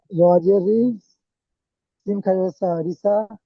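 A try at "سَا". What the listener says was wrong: দেন খালা যাবার সা, খালা যাবার বলেছি না যে ভাই টান দেবেন। চলেন টান দিয়ে বলেন।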